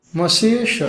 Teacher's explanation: षट्कोण का जो स होता है मूर्धन्य कहते हैं। क्योंकि इसमें जीभ आपकी ऊपर तालू से टकराती है।